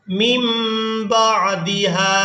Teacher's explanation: نون ساکن کے فوراً بعد با ہے تو یہاں نون کو میم کے ساتھ بدل کر ادا کیا جائے گا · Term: اقلاب